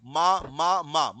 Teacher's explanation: बोलो ये मां बोलो मां में हवा नहीं निकल रही है मा मा मा मा में हवा नहीं निकल रही है तो ये महाप्राण नहीं है